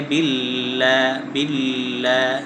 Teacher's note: লামের মাখরজ হল জিহ্বার আগার কিনারা সামনের উপরে দাঁতের মাড়ির সঙ্গে লাগাইয়া। · লামের মাখরাজ হলো জিহ্বার আগার কিনারা সামনের উপরের দাঁতের মাড়ির সঙ্গে লাগিয়ে, হ্যাঁ আগার কিনারাটা এই উপরের দাঁতের যে ভিতরে মাড়ি আছে একটা উঁচা জায়গা, সেখানে লাগিয়ে বিল্লাহ বিল্লাহ, হ্যাঁ এইভাবে উচ্চারণ করতে হবে।